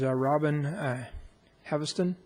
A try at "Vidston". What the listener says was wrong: Vidston, Robin Vidston. Vidston, the H is silent.